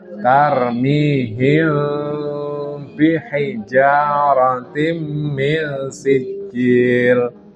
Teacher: mim mati ketemu ba itu ikhfa syafawi, samar di bibir. Bukan idhar syafawi, bukan, tapi ikhfa syafawi.